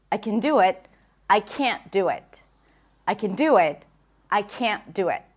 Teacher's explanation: But when you're hearing people, expect to hear that nasal sound can't when you hear the negative form. Also, when you hear the pure vowel, it is more likely that it's the negative form rather than the positive form because this is usually reduced